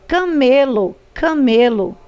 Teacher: a sílaba tônica é o me